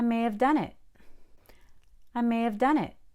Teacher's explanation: i may have done it you can say mayev or maya sometimes we don't even say the v